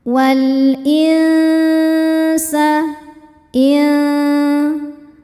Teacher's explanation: Ada hukum ikhfa hakiki awsat karena nun sukun bertemu dengan huruf sin. Cara baca nun sukunnya ini adalah dibunyikan samar-samar menuju sin, kemudian dengungkan. Dengung dan kesamarannya sama besar untuk sin ini karena sin ini makhrajnya tidak terlalu dekat, juga tidak terlalu jauh dari nun. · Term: ikhfa hakiki ausat